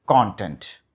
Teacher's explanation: మీరు క్రియేట్ చేసే మెటీరియల్ అయితే స్ట్రెస్ ముందు ఉండాలి. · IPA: /ˈkɑːn.tent/